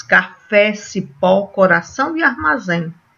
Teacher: a gente observa aí que a sílaba forte é a última.